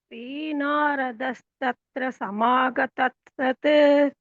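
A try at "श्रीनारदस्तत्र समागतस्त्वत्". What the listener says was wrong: தத்சத் இல்ல, தஸ்த்வத். சமாகதஸ்த்வத்.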